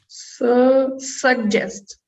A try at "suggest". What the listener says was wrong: Yeah, that's it. Good. Very good.